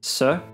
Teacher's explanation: Alveolar, the tongue touches the alveolar ridge, which is just behind the teeth, s. Postalveolar touches just behind the ridge, sh.